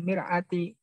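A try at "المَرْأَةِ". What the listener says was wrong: Mar'ah, bukan mir'ah. Beda artinya nanti. Mar'ah.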